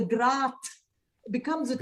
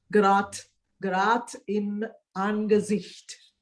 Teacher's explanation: not too bright a T, but it's a mixture of D and T